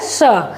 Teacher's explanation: श बोलते समय हमारा जो जीभ है वो तालु से टच करेगा। स्पर्श करेगा। · जो ये तालु है मुंह में हमारे ऊपर उसमें जब जीभ स्पर्श करता है तब इसकी ध्वनि आती है श। आप इसको उच्चारण करके देखिएगा कि श बोलते समय हमारा जो जीभ है वो तालु से टच करेगा। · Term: तालव्य स